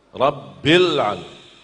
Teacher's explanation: Rabbil, tekankan ba, tetap tekan ba karena ada tasdid kan. Rabbil, terus masuk langsung sambung ke huruf lam.